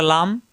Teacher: জিহ্বার আগার কিনারা উপরের দাঁতের গোড়ায় লাগবে